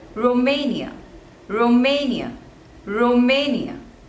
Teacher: there are three syllables and the stress is on the second one